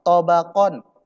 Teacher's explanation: Ya, tobakon itu qafnya jangan tipis. Qafnya tebal, tobakon. Tetapi nun sukunnya jangan tebal, tapi nun sukunnya tipis.